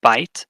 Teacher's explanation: is sort of a combination of 2 vowel sounds, but we treat it as a single sound, a single vowel or single syllable.